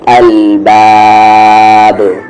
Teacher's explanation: last میں قلقلہ ہے، الباب، آواز باؤنس ہوگی